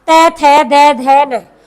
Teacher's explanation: जीभ दांत के ऊपर स्पर्श कर रही है